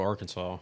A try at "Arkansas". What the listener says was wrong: It's Arkansas. It's Arkansas. Not your Kansas. It's Arkansas.